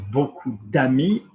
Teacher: if you have a D going into an open mouth, so lots of friends, beaucoup d'amis, that will just link, that will drop.